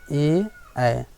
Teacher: तो ए ऐ कंठ और तालु दोनों से उच्चारण होते हैं। इसलिए इसको बोला गया है कंठ तालव्य।